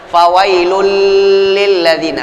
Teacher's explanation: Masuk bila gunnah, enggak pakai ditahan, enggak pakai digunnahkan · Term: idgham bila ghunnah